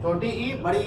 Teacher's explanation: छोटी ई और बड़ी ई का उच्चारण स्थान है तालु। जीभ जाकर के तालु से टकराती है।